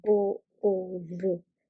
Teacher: The O sound from the bo is elongated, that's why it's called elongated vowel. So bo, o, ru, you clap thrice.